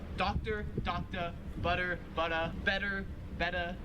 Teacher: now these last three all kind of have to do with how australians pronounce the r sound at the end of a word so they just don't really pronounce it